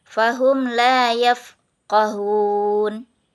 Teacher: dibaca Ikhfa Syafawi di mim karena bertemu dengan Fa sehingga bunyi mim dibaca samar-samar dan gunah